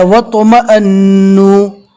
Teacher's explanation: الف کو نہیں پڑھیں گے، واو کو ڈائریکٹ تو سے ملائیں گے، اس لیے کہ تو کے پر جزم ہے اور جزم والے حرف کو پہلے والے حرف سے ملا کر پڑھا جاتا ہے۔